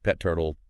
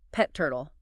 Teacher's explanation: Both have a T sound at the boundary. So it becomes just pet turtle, one T.